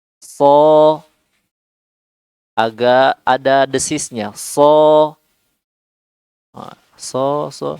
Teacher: Suaranya dari ujung lidah dia nempel ke pangkal gigi seri, ya, gusi gigi seri bagian bawah.